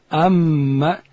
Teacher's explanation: میم ادا کیږي د دواړو شونډانو د یو ځای کېدو څخه د وچې حصې څخه پر عادت باندې چې کله خوله بند وساتو د شونډانو بیا دوی حصې وي، یوه د خولې و طرف ته چې هغه لنده ده، بل د بانې حصه چې هغه وچه ده.